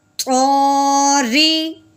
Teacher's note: را کے نیچے زیر ہے، اس را کو پر نہیں بلکہ باریک کر کے پڑھیں گے